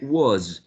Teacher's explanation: You can say was with a short o, or you can say was with a wedge, but always the last sound is voiced.